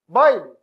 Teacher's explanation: Baile, decrescente, vogal mais semivogal. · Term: ditongo decrescente